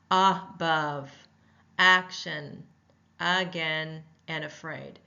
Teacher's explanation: vowel sounds in a word will be it loses its emphasis it's a short uh sound mouth is half open and relaxed